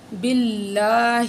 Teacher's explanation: اس سے پہلے زیر ہے با کے نیچے، تو ہم اس کو باریک پڑھیں گے اللہ کو